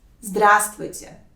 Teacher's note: Instead of four consonants, you need to pronounce only three of them. · the important note here that the first letter в is silent